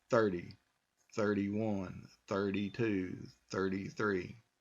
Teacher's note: the T sound is now a sound of a d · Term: D sound